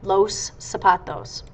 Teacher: Z's sound like s's so it sounds like it starts with the same letter that it ends with